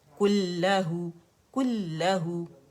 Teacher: بعض لوگ کیا کرتے ہیں کلہو، یہ نہیں کرنا، اس کو جسٹ جماؤ دینا ہے، 2 لام ادا کرنے. وَلَمْ يَكُن لَهُ، کلہو، کلہو، کل سلو موشن میں کلہو، ٹھیک ہے، جماؤ کے ساتھ.